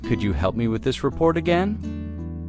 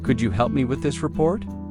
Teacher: The words help and report carry more weight in the sentence.